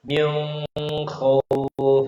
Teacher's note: Karena Abu Ja'far membaca nun sebelum bertemu khauf itu harus dibaca ikhfa. Harus baca dengan nun mukhfah.